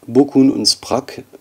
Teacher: hier liegen nicht verschobene Verschlusslaute vor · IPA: [k]